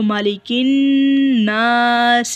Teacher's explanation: یہاں پر وقف کیا تو سین کو جزم کے ساتھ ادا کیا، ساکن ہو گیا سین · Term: سین ساکن